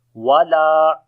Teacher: Lam we long due to alif madda.